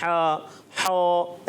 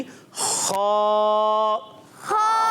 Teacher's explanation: बाज़ बच्चे बिल्कुल जो है हा जैसा पढ़ते हैं, हा हा, ऐसे नहीं करना। खा की अदायगी खा, खा, और मोटा भी रखना है।